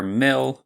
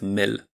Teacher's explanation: Polish has a standard clear l, while the English one is usually a velarized [ɫ] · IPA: [mɪɫ] with [mɘl]